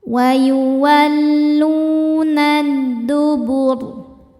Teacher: Kemudian alif lam namanya alif lam syamsiyah sebab alif lam menghadapi huruf syamsiyah yaitu dal. Cara bacanya alif lam lewat, tidak dibaca, masuk langsung ke dal atau disebut idgham syamsi.